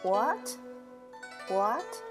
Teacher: the second tone is a rising tone. So it started from a lower level and ended at a higher level.